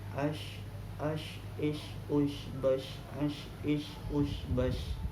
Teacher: makhrajnya shin adalah tengah lidah yang dia naik ke langit-langit mulut.